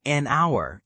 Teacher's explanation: Even though H is a consonant, because the H is silent, it sounds like our.